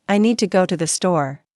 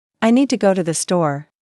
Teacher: The stress is on need and store, while to and the are softer and faster. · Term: rhythm